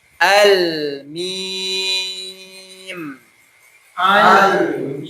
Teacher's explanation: mim itu dia termasuk huruf bibir, tapi tertutup.